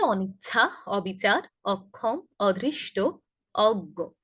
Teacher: নেতিবাচক অর্থে ব্যবহৃত হলেই এমন ভাবে আমরা অ এর উচ্চারণ অ এর মতোই করব, ও এর মতো করব না।